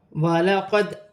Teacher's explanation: دال ساکن کو اپنے سے پہلے حرف کی حرکت کے ساتھ ملا کر پڑھا جائے گا